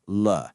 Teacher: It's pronounced with that neutral fifth tone, so it's very light, almost like it's just tacked on to the end of another word.